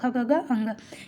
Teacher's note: कंठ व्यंजन होते हैं। जैसे क ख ग ये सब बोलते हैं तो हमें किस पर जोर पड़ता है, कंठ पे।